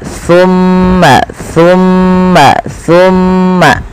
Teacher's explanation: Sa adalah ujung lidah kita nempel dengan gigi seri sambil agak digigit dikit.